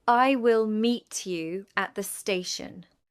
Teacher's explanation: in the sentence, I will meet you at the station. the stressed words are meet and station. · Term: sentence stress